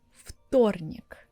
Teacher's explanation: в becomes ф voiceless and it sounds like Фторник. You barely could hear this ф sound at the beginning.